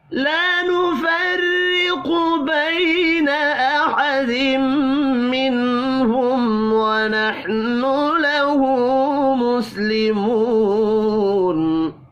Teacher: میم مشدد پر غنہ کریں گے